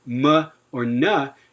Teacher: Nasals, interestingly, even though they're sonorants, even though you don't get a strong burst or a noise component, they still involve stop articulation, because in a nasal like m or n, you are completely blocking off airflow through the oral cavity. It just doesn't create obstruent noise because the airflow is continuing through the nasal cavity.